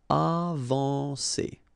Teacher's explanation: combine A and N, you get the nasal en